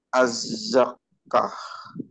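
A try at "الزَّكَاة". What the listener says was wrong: Bukan az-zakkah, tapi az-zakah.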